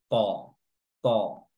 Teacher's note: huruf ta di sini makhrajnya adalah ujung lidah bertemu dengan pangkal gigi seri atas dengan didampingi dengan sifat isti'la ya, atau sifat tebal, ta, ta.